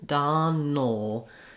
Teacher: this a is almost no vowel at all we're going right from the n